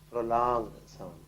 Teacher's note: quiere decir que la O en este caso tengo que alargarla